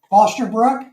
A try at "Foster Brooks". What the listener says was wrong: Brooks with an S at the end.